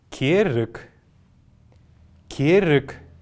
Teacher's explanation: вы наверное заметили что последняя буква г произносится как к · «Керык» мы здесь видим неясный звук, неясный гласный.